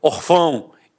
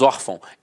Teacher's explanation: Então a sílaba tônica está na penúltima e é acentuada.